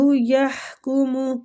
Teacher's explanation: یحکم ہا وسط الحلق سے